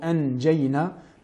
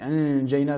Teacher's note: nous aurons le milieu de la langue qui s'élèvera vers le milieu du palais